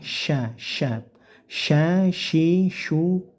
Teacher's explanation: syinnya tebalkan karena ini syin besar ya dengan cara desisnya yang banyak